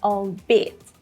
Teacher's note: the second syllable has the main stress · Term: word stress